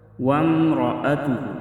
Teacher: وامرأتہ را پر زبر ہے تو اس را کو ہم موٹا پڑھیں گے۔